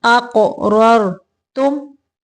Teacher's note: قاف کو قلقلہ کریں گے